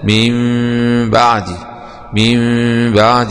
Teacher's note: إقلاب النون الساكنة بنقلبها ميم مع إخفاء الميم